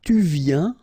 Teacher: Final S not pronounced, and then you get this yen sound